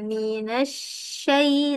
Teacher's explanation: So, kena ada hams, kena ada angin.